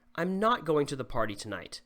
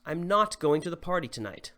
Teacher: emphasizing the word not by making your voice go up on it